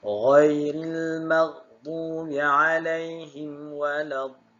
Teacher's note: Sebab di situ dia punya fungsi mad lazim kalimi musaqqal. Panjang pada dha tu dibaca dengan 6 harakat, baru anda masukkan sebutan lin pada lam yang berikutnya.